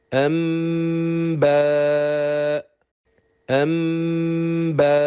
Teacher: In the second example, the effect of letter Ba on Meem Saakinah is that it will cause it to change into a hidden Meem with prolonged Ghunnah. So we move directly from letter Hamza to letter Ba's point of articulation, which is the lips. We pronounce a hidden Meem with prolonged Ghunnah, then pronounce letter Ba with its harakah. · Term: Qalb